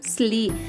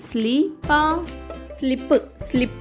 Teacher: S L యొక్క శబ్దం స ల కాకుండా స్లా అవుతుంది కాబట్టి ఎస్ ఎల్ ఐ యొక్క శబ్దం అవుతుంది స్లీ ఎస్ ఎల్ ఐ